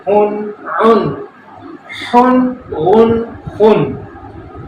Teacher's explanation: حلق سے نکلے ا ہ ع ح غ خ